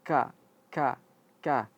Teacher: Yatazakkaru. Nah, khusus untuk ka ketika diucapkan ada sedikit keluar sedikit saja jangan terlalu banyak.